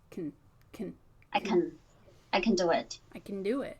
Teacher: if it's unstressed like that, you can change it to just the KN sound.